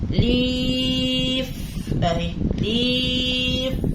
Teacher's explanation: شوفوا اللام جابت وراها مد بالياء